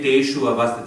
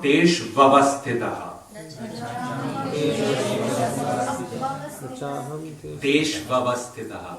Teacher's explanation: U before A becomes Va.